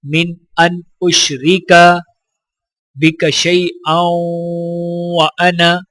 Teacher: حمزہ کو واو کے ساتھ ملاتے ہوئے واو مشدد کے اوپر غنہ کریں گے